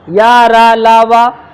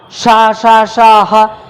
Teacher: या रा ला वा वायु का वेग कम है, शा शा शा हा वायु का वेग ज़्यादा है, तो ये हो गए महाप्राण और ये है अल्प प्राण।